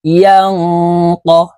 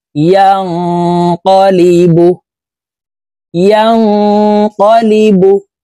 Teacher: ইয়া নুন জবর ইয়াং, ইকফা গুন্না। নুন সেকেন্ডের পরে ইকফার হরফ কফ আসছে, এই কারণে এই নুন সাকিনকেও নাকের ভিতরে লুকাইয়া পড়তে হবে